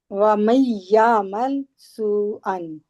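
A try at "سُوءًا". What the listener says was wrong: सू को लंबा करें।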